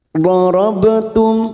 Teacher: huruf dhad pinggir lidah kita nempel pada gigi geraham atas, boleh kiri boleh kanan senyamannya. Darabtum dha wi darabtum ba sukun qalqalah sugroh, karena mati asli di tengah kalimat jangan lupa dipantulkan.